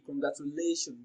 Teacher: Now, congratulations is pronounced and broken down into syllables as congratulation. So the fourth syllable, lay, receives the stress.